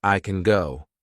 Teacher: I can go now and it sounds like I can go so we kind of add another g at the end of the word can